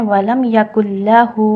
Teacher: ولم یکل لہ، ہا کے نیچے واو صغیرہ، واو صغیرہ مینس مد طبیعی، یعنی یہاں آپ نے ہا کو حرکتین کرنا ہے، ہا کو 2 حرکہ کھینچ کر آپ نے ادا کرنا ہے